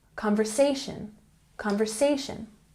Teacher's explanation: Conversation has the emphasis on the third syllable.